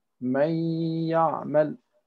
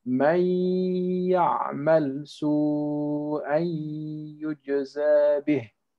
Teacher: At this point, the noon disappears and we're connecting the whole word as if there is no noon, right? May ya'mal. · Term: idgham